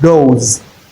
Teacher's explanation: the s that is added to go is transcribed as z that is the voiced alvular fricative sound not the voiceless.